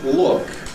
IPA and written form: ɫʊk (look)